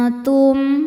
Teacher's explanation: cara bacanya nun disamarkan ke ta disertai dengung dengungnya sedikit karena ta makhrajnya dekat dengan nun ujung lidah mau disentuhkan dengan makhraj huruf ta, yaitu pangkal gigi seri atas tapi belum menyentuh itu antum. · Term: ikhfa hakiki aqrab